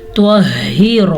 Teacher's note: त्वा को पुर पढ़ेंगे क्योंकि त्वा हरूफ मुस्तालिया में से है। त्वहिरा, रा को ज़बर की वजह से पुर पढ़ेंगे।